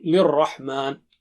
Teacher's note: Ra has shadda, so both sounds of ra will be thick.